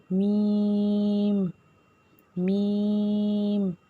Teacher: میم کو دونوں ہونٹوں کے خشک حصے سے ادا کیا جائے گا